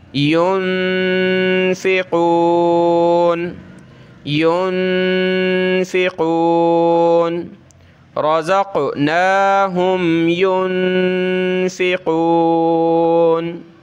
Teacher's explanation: اخفا کرنا ہے، یعنی ناک میں آواز چھپانی ہے، نون ساکنہ ہے